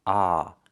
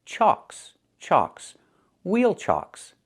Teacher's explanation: The CK is a double consonant that makes the previous vowel short, so we have the ah sound, like in socks and blocks. It's an open sound, ah. So it's pronounced chalks, chalks, wheel chalks.